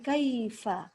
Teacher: Fa harus keluar nafas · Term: al-hams